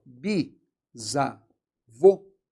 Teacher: oxítona terminada em ó letra ó com som fechado